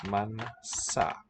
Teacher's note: So we spell it with a Z, but it sounds like our S. Voiceless. Manzanas.